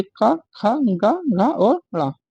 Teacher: का वर्ग के जो होते हैं वो कंठ से बोले जाते हैं